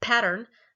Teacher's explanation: And so there's an aspirated P. It's at the beginning of the word